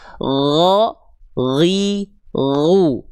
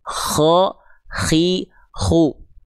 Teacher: Jadinya huruf K pasti yang keluar. Itu aja bedanya huruf gin dan K hanya dari segi nafas · jangan sampai huruf gin dan K ini tertukar karena mereka dilafalkan di tempat yang sama. Sama semua sifatnya. · Kalau huruf ghain dia mengalir suara tanpa mengalir nafas. Ya. Kalau huruf kho mengalir suara plus dengan mengalir nafas. Huruf ghain mengalir suara saja tanpa mengalir nafas.